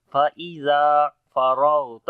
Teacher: را اور غین دونوں کو موٹا پڑھیں گے ، را کے اوپر زبر ہے اس وجہ سے، اور غین